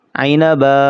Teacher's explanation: با دو زبر بن، عینبن، وقفن۔ وقف کی حالت میں یہ دو زبر الف میں کنورٹ ہو جائیں گی، الف پڑھا جائے گا، عینبن، وقفن عینبا۔